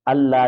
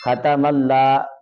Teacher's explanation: لفظ اللہ جو ہے اللہ، یہ جو لام ہے نا اس کا یہ ہمیشہ ہی موٹا ہی پڑھنا ہے، اللہ نہیں پڑھنا.